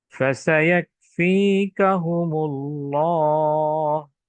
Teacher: এখানে ফা এবং সিন হচ্ছে রিখওয়ার হরফ, যা নরম ভাবে উচ্চারণ করা হচ্ছে।